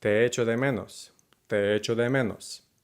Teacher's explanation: The most important part really is just to not put that pause between your vowels like we tend to do in English.